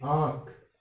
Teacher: और इसी तरह से मैं कहूं कि आंख, इस पर चंद्र बिंदु है, तो आंख, इसमें पूरी तरह से क्या है, नासिक की ध्वनि न निकल करके आधी ध्वनि नाक से निकल रही है और आधी श्वास वायु है वो मुंह से निकल रही है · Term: अनुनासिक